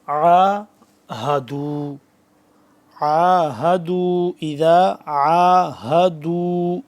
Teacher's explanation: عین کو نکالنا ہے حلق کے درمیانی حصے سے اور اس ہا کو نکالنا ہے حلق کے آخری حصے سے جو سینے کے پاس ہے